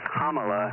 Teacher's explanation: it's pronounced Kamala the emphasis on the first syllable kind like the punctuation mark comma like a comma and just